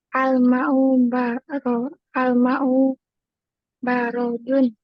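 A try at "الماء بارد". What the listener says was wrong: Bari, bukan baro. Ulangi.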